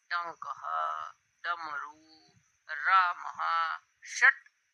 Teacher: जिह्वा मुड़कर मूर्धा को छुए जैसे ट बोलने में। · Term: मूर्धन्य